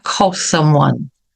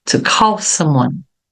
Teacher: Então veja que aqui eu tenho consoante aqui outra consoante então a última letra vai ser pronunciada mas um pouquinho mais suave do que quando pronuncia a palavra isolada